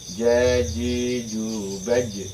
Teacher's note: Tidak bisa disamakan dengan ketika mengucapkan huruf jim. Kalau jim itu dia tidak hamas, jadi tidak boleh keluar anginnya.